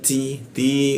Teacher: ujung lidahnya bertemu gigi dia bocor halus